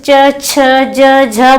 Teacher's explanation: तो ये स्पर्श संघर्षी व्यंजन होते हैं। ये बहुत अधिक स्पर्श करते हैं